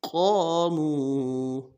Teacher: قاف کے بعد الف مدہ ہے، موٹا کریں گے قاف کو، الف مدہ کو ایک الف دار میں کھینچیں گے.